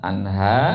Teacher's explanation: Karena nun mati bertemu ha. Maka nunnya dibaca izhar, dibaca jelas.